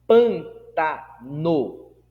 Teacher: Pantano, o acento tônico é no pan, ou seja, na antepenúltima sílaba.